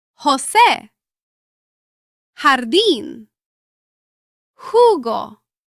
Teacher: The Spanish J does not sound like the English J. It is produced farther back in the throat.